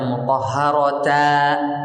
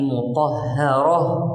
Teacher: Huruf tak marbutah bukan termasuk huruf iwad, sehingga tidak dibaca mutahharata tapi mutahharah. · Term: Ibdal